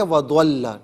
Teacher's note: وضل میں لام کو پر نہیں پڑھنا، ضاد کو پر پڑھنا ہے